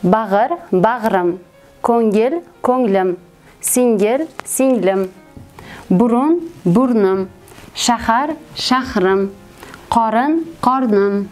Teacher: Demak, birinchisi og'iz, ko'ngil, singil, burun, shahar, qorin, bag'ir kabi so'zlarga egalik qo'shimchasi qo'shilishi natijasida ushbu so'zlarning ikkinchi bo'g'indagi unli tovush tushib qoladi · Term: tovush tushishi